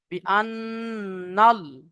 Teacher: তাহলে নুনের উপরে তাজদিদ এসেছে নুন মুশাদ্দাদ গুন্না ওজিব এক পরিমাণ গুন্না করতে হবে